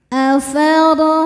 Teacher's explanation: Dibaca secara tafhim karena harakatnya di atas yaitu harakat fathah. Cara bacanya ro dibaca tebal. Afar ai huruf lin sebab ada ya sukun sebelumnya berharakat fathah.